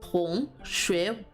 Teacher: So an example sentence would be this one, which is 他是我的同学, which again, 同学, both having the going up second tone